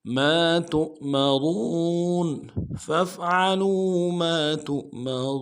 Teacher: نہیں پڑھیں گے۔ تؤمرون میم کو نون سے ادا کرنا ہے، را کو موٹا کریں گے، واو کے ساتھ ملانا ہے، واو مدہ ایک الف دال میں کھینچیں گے ، نون کو نون سے ادا کریں گے۔ ما تؤمرون فافعلوا